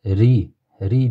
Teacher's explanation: Ri deb tarqiq qilib, ingichka qilib qo'shib o'qiymiz ekan. Ro harfi ustida zamma bilan kelgan.